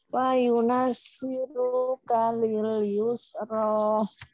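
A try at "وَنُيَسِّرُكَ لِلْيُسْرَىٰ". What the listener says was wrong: Wa diulang wa nuyas bukan wa yunas tapi wa nuyas.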